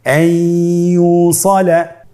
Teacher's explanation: নুনকে আমরা পরবর্তী হরফ ইয়ার সাথে মিলিয়ে গুন্নার সহিত পড়ব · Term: ইদগামে বাগুন্না